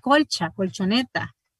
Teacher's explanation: una L palatalizada, entonces está antes de sonidos palatales o prepalatales, como en colcha, colchoneta